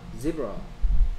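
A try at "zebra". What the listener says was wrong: 지브라가 아니고요. 얘가 으 소리가 아니고 어 소리인데 어떻게 지브라입니까?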